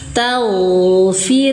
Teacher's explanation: roknya tipis atau tarkik karena sebelum rok berharokat kasroh. Firli, satu ayunan panjang, mad tabi'i zahiri.